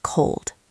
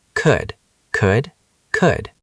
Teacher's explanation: A common mistake is pronouncing the L sound, but there is no L sound. It's could, not cold.